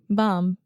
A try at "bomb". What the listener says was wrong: Okay, you're still saying bomb. There's no B. The B is totally silent. Bomb. Say mom. Okay, just mom with a B at the beginning. Bomb.